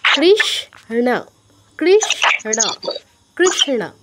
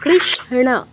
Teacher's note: সটা আমরা অর্ধেক উচ্চারণ করব